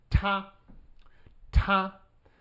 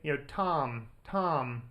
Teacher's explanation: T in Chinese is a bit more aspirated. And by aspirated just means lots of air comes out. So in English, you'll say, Tom, right?